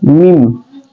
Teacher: karena ketika kita sebut mim maka mau tidak mau akan keluar di hidung juga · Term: syafatain sekaligus haisun